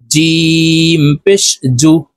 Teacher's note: জিম হরফ জিহ্বার মধ্যখান থেকে উচ্চারণ করতে হবে কারণ জিমের মাখরাজ জিহ্বার মধ্যখান থেকে হবে জিম পেশ জু জাল